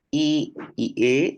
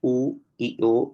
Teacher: I y e son vocales anteriores u y o son vocales posteriores